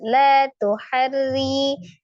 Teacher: ro kasrah dibaca tipis maka harnya juga tipis rinya juga tipis La tuharri.